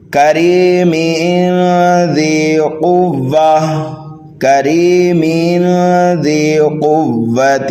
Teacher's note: تنوین کے بعد ذال حروف اخفا میں سے آنے کی وجہ سے جب ملائیں گے تو یہاں پر اخفا کریں گے